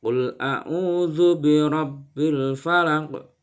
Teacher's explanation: ada bacaan qalqalah yaitu memantul, ada huruf qaf